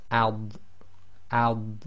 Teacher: the dod is normally pronounced with the left side of the tongue touching the upper left teeth. So even when you do it with sukun, you should feel the left side of your tongue touching the upper left teeth.